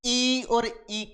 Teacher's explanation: ई और ई का उच्चारण करते हैं तो हमारे जो जिह्वा है वो स्पर्श करती है किसको, तालव्य को। तो तालु को स्पर्श करती हुई एक विशेष दबाव होता है तालव्य पर, अतः ई और ई वर्ण जो है वो कहलाते अपने तालव्येश्वर, तालव्येश्वर।